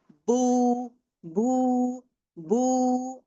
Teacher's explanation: मेरे होठ लगे हुए थे। वो दोनों डिस्कनेक्ट हो के गोल शेप में आने से ब की आवाज आ रही है।